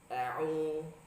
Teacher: Selanjutnya juga ya, banyak juga ketika membaca a'u kita sudah tahu bahwasanya kata ain itu keluar di wastul halqi tengah tenggorokan, tapi banyak juga yang suaranya masuk ke hidung atau masuk ke khayshum sehingga bunyi a'u. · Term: huruf ain